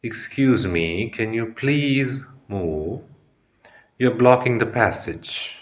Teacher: use a calm but firm tone emphasizing please to make the request polite but assertive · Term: voice modulation